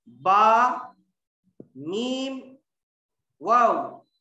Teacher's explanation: 16वां मखरज शफवी, दोनों होठों से 3 हरूफ, दोनों होठों से 3 हरूफ, बा, मीम, वाव, गैर मद्दा निकलते हैं।